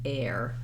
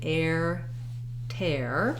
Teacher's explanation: in this word it says air so i have to glide from that tense a into my ear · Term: the air diphthong